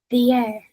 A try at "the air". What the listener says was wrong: Good, but I want you to open more. The yeah. Remember, it's air like that. The yeah. The problem is that this is what we talked about last time. I think you've got a sort of sense of how that word is supposed to sound, the word air, which is not quite right.